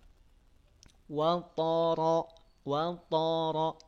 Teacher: Wat th yang dinaikin pangkal lidahnya untuk menbalkan huruf tho th selain dia punya sifat istila naik pangkal lidahnya juga punya sifat idbak